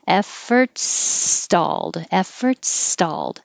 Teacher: is also or sounds like er effort his reform effort stalled when you finish efforts with your s keep your s going and you go right into stalled no stopping